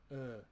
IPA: ə